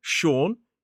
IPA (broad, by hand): ʃɔːn